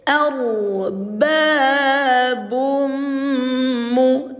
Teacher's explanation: Jadi ketika tanwin atau nun sukun berjumpa dengan salah satu huruf idgham bighunah tuh salah satunya huruf mim ini, maka cara membacanya didengungkan ya selama dua dua harakat atau dua ketu ketukan